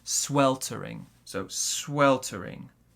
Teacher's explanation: our stress in this word is on the first syllable